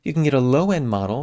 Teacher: Here we take out that d in end.